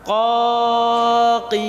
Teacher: Huruf yang keluar dari pangkal lidah yang pertama paling belakang huruf qaf. Huruf qaf. Qaf.